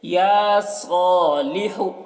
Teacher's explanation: لام اور ہا کو جلدی پڑھ رہے ہیں کیونکہ زیر اور پیش ہے